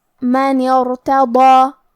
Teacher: کلمت الا میں حرف اللام پہ تشدید ہے تو ہم 2 حرف کے برابر لام کو پڑھیں گے کیونکہ تشدید کی اصلیت 2 حرف ہے. کلمت ارتضا کی شروعات میں الف ہے لیکن یہ حمزۃ وصل ہے تو ہم حمزہ ظاہر نہیں کریں گے. حرف النون کے بعد حرف الراء پڑھیں گے.